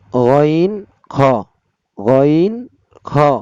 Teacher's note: 3 number মাখরাজ হলকের শেষ ভাগ হইতে গইন খ